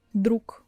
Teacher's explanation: Друг, g, as you can see, stays in the pair with k, so obviously g staying at the end of the word pronounces as k